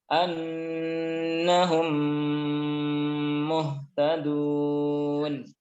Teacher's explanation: Jadi mim sukun ketemu dengan mim, maka mim yang pertama dimasukkan ke mim yang kedua, dibaca dengan tempo gunnah yang dipanjangkan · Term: idgham mimi